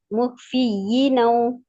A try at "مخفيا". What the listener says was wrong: یہ نہیں، یا پہ زبر ہے دیکھیں، ولا مخفيا في الصلاة ففصلا